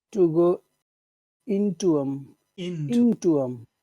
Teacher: In well, not into them, into them. You have to put all the emphasis on the word in, on the sound in.